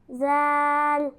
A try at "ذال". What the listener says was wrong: وہ وہ بغیر سیٹی کے وہ.